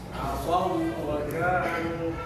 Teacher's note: الشفة تأتي على الواو فقط، لأن الواو من حروف الشفتين. عصوا لا تقول عصوا، تجمع الصاد والواو عند الشفة.